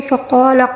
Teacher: قاف کو پر پڑھیں گے اور الف مدہ بھی ہے یہاں پر، قاف کے ساتھ جو ہے اگلا والا حرف جو ہے وہ الف مدہ ہے، خالی الف سے پہلے یعنی قاف کے اوپر زبر ہے، اس وجہ سے اس الف کو یعنی خالی الف کو یہاں پر ہم نے پڑھنا ہوگا، ٹھیک ہے۔